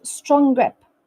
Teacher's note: in strong links smoothly to the gr the G in grip there is no pause and the NG sound slightly adapts to transition to the G sound